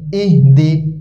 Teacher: হামজা হাজের ই, এই হা মোটা হবে